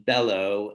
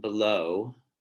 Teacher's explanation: um are differing in stress here between bellow and below okay the first syllable stressed on bellow the second syllable stressed on below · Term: word stress